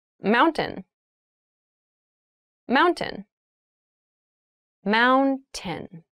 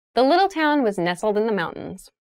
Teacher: it sounds like mountain. The T sound is reduced.